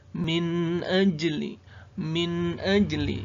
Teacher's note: bacaan Qolqolah Sugro huruf Jim sukun di tengah-tengah kata